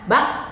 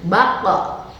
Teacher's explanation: Qaf dalam kondisi sukun, maka itu harus disertai dengan salah satu sifatnya adalah qalqalah, ya. Jadi baqqa, mantul ketika sukun.